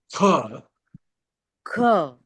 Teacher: The same thing comes once again with more air, which is the mahaprana. So ka, Ka, again tongue goes to the back of the throat and says kha.